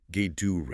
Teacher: The T in Gatorade is a flap T because it's between the A and the O sound, which reduces.